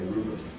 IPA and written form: ˈruːbəb (rhubarb)